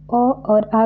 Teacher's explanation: अ और आ का उच्चारण स्थान कंठ होता है